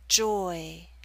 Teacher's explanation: be more spread at the end of the word Joy again you're moving more towards e at the end so you're pulling your lips outward not into a full spread e but close